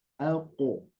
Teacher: Sedikit di qalqalahnya, qalqalah qaf agak tebal dan juga bunyinya hampir-hampir menyerupai ya, tapi hanya pantulan